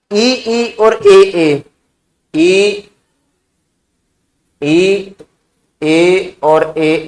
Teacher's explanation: अग्र स्वर में जीभ का आगे का भाग में हलचल होती है